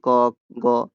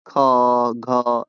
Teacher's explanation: व्यंजन ध्वनि को अल्पप्राण जिनके उच्चारण में कम हवा लिया जाए। जैसे कि क और महाप्राण जिनके उच्चारण में अधिक हवा निकले जैसे कि ख घ में विभाजित किया गया है।